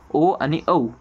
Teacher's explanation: कंठ ओष्ठम म्हणजे कंठ आणि ओठ म्हणजे गळा आणि ओठ या दोघा मिळून काय होते